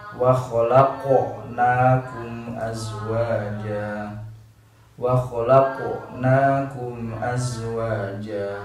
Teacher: Huruf qaf dan ta ini isti'la, huruf bagian atas, sehingga pelafalannya itu harus kembali ke atas juga, harus isti'ala juga, harus mengangkat juga.